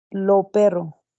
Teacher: En las combinaciones C, sí, como S, ejemplos, el cielo azul, el cielo azul. Aspiración de S. Al final de sílaba, zonas de la costa ecuatoriana.